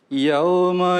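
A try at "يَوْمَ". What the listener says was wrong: Yum saja, Iya, mim tapi tidak sempurna. U-nya enggak panjang.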